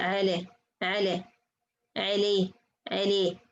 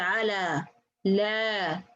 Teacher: This is something between fatha and kasra.